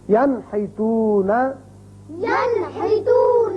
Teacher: نون ساکن کے بعد ہا آ گیا تو اس کو ہم ظاہر کر کے پڑھیں گے نون کے مخرج کو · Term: اظہار